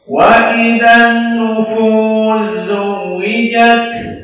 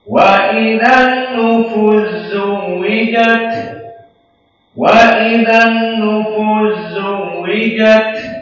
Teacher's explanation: maka dibaca an-nufu sinnya diidghamkan kepada zai, maka nufu langsung masuk kepada zai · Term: idgham al-kabir